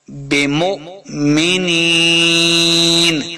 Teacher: بمؤمنین نون زید یعنی یا مدہ ہے، یہاں پہ ہم نے اس کو دو حرکات لمبا کرنا ہے اور آخر پہ ہم وقف کر دیں گے.